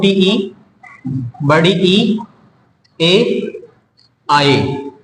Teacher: कि जो अग्र स्वर के आधार पर होता है इसमें आता है छोटी ई, बड़ी ई, ए, आए, ये आपका होगा अग्र स्वर। ये जीभ के अगले भाग के अनुसार बोले जाते हैं।